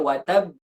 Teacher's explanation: Ketika kita waqaf kita tetap melafalkan dua huruf. Yang pertama sukun, yang kedua diqalqalahkan.